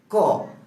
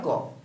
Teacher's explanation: আমাদের জিহ্বার যে মূল রয়েছে, গোড়া রয়েছে, এই মূলটা উপরের সাথে গিয়ে আটকে যায় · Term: জিহ্বা মূলীয় ধ্বনি